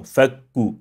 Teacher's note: Fakuraqabah, you see, this kaf here, even though it is emphasized, we still do not apply the hams to it